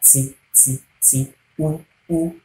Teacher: As we have it in English, T is an alveolar sound. The tip of the tongue touching your alveolar.